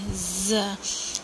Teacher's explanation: زبان کی نوک جب سامنے کے جو دانت ہیں اوپر کے اور نیچے کے ان کے درمیان میں رہتی ہے تو ز ادا ہوتا ہے۔ ز سین ز اور سین ان کا سیم مخرج ہے۔